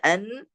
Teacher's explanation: nunnya berposisi sukun, maka suaranya keluar daripada hidung atau khayshum.